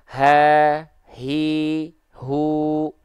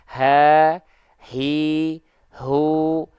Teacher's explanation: dilafalkan tepat dari bagian pangkal tenggorokan kita tidak membayangkan dari dada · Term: huruf ha besar